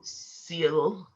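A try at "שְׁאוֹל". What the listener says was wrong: The shield. That one's a SH.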